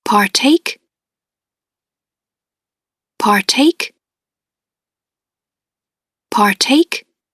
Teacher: you partake partake partake here we see uh the labial one voiceless labial one voiceless alveolar one and voiceless velar one · we have a a nice faint burst of a labial one